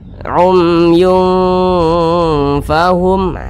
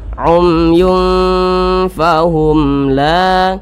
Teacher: Nah, huruf nunnya itu jauh dengan huruf di tengah-tengah, tidak terlalu dekat, tidak terlalu jauh dengan huruf fa. Maka cara membacanya itu disamarkan, dan kadar samar dan kadar dengungnya itu seimbang. Jadi jangan dibaca umyung, itu ketebalan, berarti ketinggian dengungnya itu. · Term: ikhfa hakiki ausat